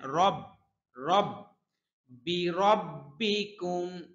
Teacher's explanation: বি রব্বিকুম র র মোটা হবে